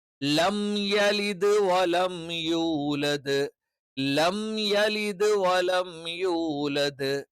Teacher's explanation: യാഇന്റെ മഖ്റജ് എന്ന് പറയുന്നത് നാവിന്റെ മധ്യഭാഗം. മധ്യഭാഗം അതിന്റെ തൊട്ടുമേലെയുള്ള അണ്ണാക്കിൽ ടച്ച് ചെയ്തുകൊണ്ടാണ് എന്ത് ചെയ്യുന്നത്, യ എന്നുള്ള ഉച്ചാരണം വരുന്നത്.